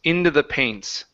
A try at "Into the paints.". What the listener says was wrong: make sure you're using your tongue for the word the.